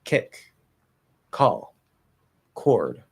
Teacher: we hear that little extra breath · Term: aspiration